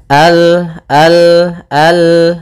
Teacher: maka kita baca dengan Al kemudian Al hati-hati dalam lafal lam sempurnakan makhraj daripada lam ujung lidah apa melekat dengan langit-langit atas